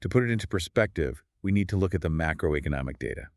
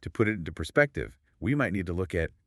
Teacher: But if I utilize what linguists refer to as a fall-rise intonation, which involves a slight drop in pitch, followed by a gentle, sustained upward lilt at the end of the clause, it alters the pragmatics entirely. · If I use a softening phrase but employ a fast, flat, downward inflecting intonation